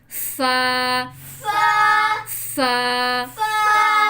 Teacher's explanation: फा में साउंड बाहर को आए, जैसे फूक बाहर को निकालते हैं ना, ऐसे करके। फा, फा, फा।